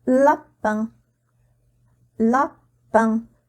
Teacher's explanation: je suis obligée de faire sortir l'air de ma bouche et de mon nez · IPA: [ɛ̃]